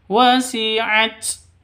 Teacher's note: taknya harus dihameskan atau nafasnya harus dikeluarkan karena huruf hamas.